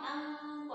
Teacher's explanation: Nun sukun ketemu dengan to. To-nya kan monyong, angko. Jadi bunyi ikhfanya juga monyong. Kalau bunyi ikhfa tuh mengikuti makhraj selanjutnya.